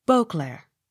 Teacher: Beauclair. Accent on first syllable.